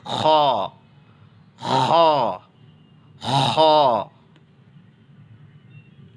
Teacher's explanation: खा का मखरज भी हा के करीब ही पड़ता है, लेकिन ये हलक, हमारा जो हलक, हाँ, जो गले में जो कौवा आता है, कौवा यानी अंदर में जो छोटी जीभ रहती है, वहाँ से खा का मखरज निकलता है। खा खा खा, वहाँ से निकालना होगा आपको।